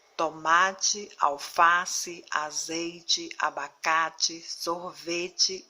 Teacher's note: bem atenção se escreve com e no final de palavras quanto a sílaba tônica ou seja a sílaba mais forte da palavra não é a última